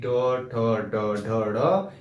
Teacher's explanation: टो का उच्चारण दंत से नहीं होता है, इसका होता है मूर्धा से, यानी टो ठो ड ढ ढ, इसका उच्चारण हम मूर्धा के द्वारा करते हैं और इसे हम टो वर्ग के नाम से जानते हैं।